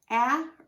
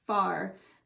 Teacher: R is influencing that vowel now in the last vowel combination this a almost sounds like a short o sound followed by an R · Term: bossy R